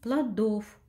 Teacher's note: ударение падает на второй слог. Безударный гласный – о.